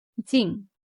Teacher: First tone, jīng, high, steady.